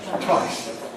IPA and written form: twaɪs (twice)